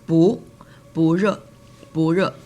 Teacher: And if it's the negative form for this, you can say 不热 change 不 to rising tone, second tone, because 热 is a falling tone